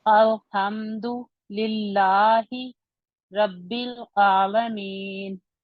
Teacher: आखिरी वाली हरकत को साकिन में जब चेंज करते हैं तो वहां पर सुकून आर्जी होगा